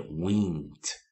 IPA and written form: wɪnd (wind)